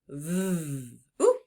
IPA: v